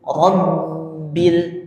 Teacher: Di sini sama penekanannya pada tasydid dulu ya. Jadi Rabb tertahan, suaranya hilang